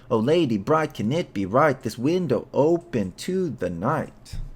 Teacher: the predominant foot is one unstressed syllable and one stressed syllable with four of these feet in each line